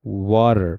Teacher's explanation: So the T sound become D, water.